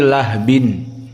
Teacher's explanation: Ha-nya disukunkan menjadi lahbin. Bukan lahabin, tapi lahbin. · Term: ha as-sakinah